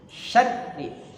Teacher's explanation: Takrir itu getaran. Getarannya jangan banyak-banyak R-nya, cukup satu saja. Syarri. Syarri ditekan karena ada syiddah ya.